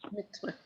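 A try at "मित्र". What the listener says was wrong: Yeah, when you write using the English letters, you can write an A, but you won't pronounce it. It's not mitra, it's mitra.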